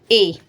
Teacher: ए और आई जो वर्ण होते हैं इनका जो उच्चारण स्थान होता है वो कंठ तालु होता है